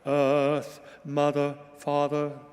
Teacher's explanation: just erase the R. Just kind of make it a vowel like Earth, mother, father, you know, just minimize the effect of the R. It's so prevalent in this particular chant and these words that Philip wrote.